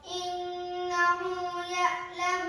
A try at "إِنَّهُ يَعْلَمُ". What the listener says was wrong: یا جھٹکا نہیں دینا، عین کی ادائیگی. إنه يعلم الجهر وما يخفى.